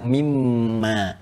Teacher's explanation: Kalau kita sambungkan min dengan ma, karena ada hukum idgham di sini, ya idgham bi gunnah, maka kita baca mimma. Asalnya min dengan ma.